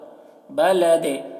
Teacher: دال میں قلقلہ ہوگا، بلد اس طرح، دال میں آواز ٹکرا رہی ہے